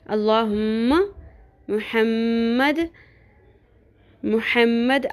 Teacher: میم مشدد پہ غنہ کرنا ہے، اس کو ناک کی ہڈی میں آواز کو ٹھہرانا ہے اور لمبا کرنا ہے میم کی آواز کو